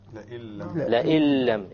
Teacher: we drop out the noon and we pronounce it with the hamza immediately merges with the lam, and that is why we call it an idgham.